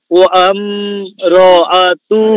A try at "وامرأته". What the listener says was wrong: আরে ওয়াম হচ্ছে কেন? ওয়াম ওয়াম হামজার উপরে তো কোনো হরকত নাই। ওয়াম ওয়াম ওয়াম ওয়া মিম জবর ওয়াম ওয়াম রাআতুহু